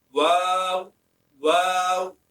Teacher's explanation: واو double ہوگا اور دونوں واو پڑھتے ہوئے ہونٹوں کو گول کریں